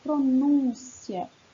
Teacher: Penúltima sílaba, a mais forte, a que vai receber o acento.